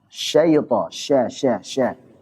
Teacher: Jadi suaranya menyebar nih di sekitar mulut, nabrak kepada gigi-gigi. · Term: tafasyi